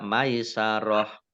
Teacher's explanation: maisarohnya waqaf tak marbutoh kasroh tanwin dibaca hak sukun. Dibaca maisaroh, dibaca pendek tidak ada tanda panjangnya.